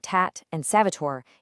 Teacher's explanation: The tip of your tongue has to touch the back of your top teeth, which creates a much softer sound and a completely different physical vibration. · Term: Sanskrit dental T